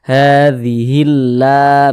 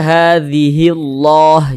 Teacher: Jadi ini loh, huruf lamnya ini, huruf lam yang di tengah nih, huruf lam jalalah namanya. Huruf lam yang terdapat di lafaz Allahnya ini dibaca tipis. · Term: dibaca tarkik